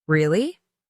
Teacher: really with rising intonation of surprise